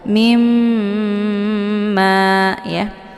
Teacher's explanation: mimnya ditekan kemudian ditahan lebih kurang 2 harokat sehingga terbentuk suara yang mendengung. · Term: ghunnah musyaddadah